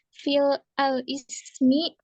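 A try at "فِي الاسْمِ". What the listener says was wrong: Oke, kalau udah fil jangan pakai al. Jadi fil ismi gitu. Itu kan sebenarnya pengucapan aja toh. Jadi kalimat fi tambah al ismi. Kalau kita sudah nyebut fil, kita jangan nyebut al ismi. Itu kita double. Jadi kalau udah fi ya. Jadi kalau misalkan sudah nyebut fil, titelnya ismi, fil ismi gitu.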